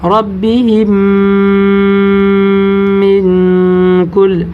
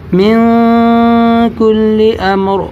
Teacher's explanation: آپ ناک میں آواز چھپا کر پڑھیں گے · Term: اخفا